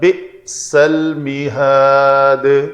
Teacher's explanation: حمزہ ساکن ہو تو جھٹکے سے ادا کریں گے، بے سل نہیں ہوگا، بئس الْمِهَادُ۔